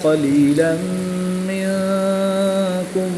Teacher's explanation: تنوین کے بعد حرف معلوم میں سے میم آ رہا ہے تو یہاں پر بھی غنہ کر کے پڑھیں گے